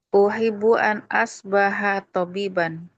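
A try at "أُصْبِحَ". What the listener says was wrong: Usbiha di sini bukan asbaha.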